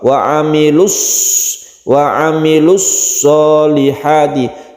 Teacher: kita langsung di idghamkan masuk ke huruf shod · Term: Idgham Syamsiah